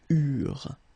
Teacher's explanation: when we've got this ENT ending at the end of the plural form, so third person of the plural, you don't pronounce it